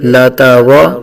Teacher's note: را پر زبر ہے، را کو پر پڑھیں گے